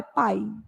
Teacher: quando eu falo a palavra pai, o I desaparece. Predomina o som do A. Pá, pá. Aí o I quase que a gente não fala, é pai, né? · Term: semivogal